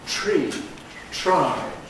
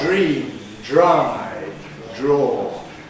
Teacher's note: when it's together with a /t/ or a /d/, English /r/ is fricative.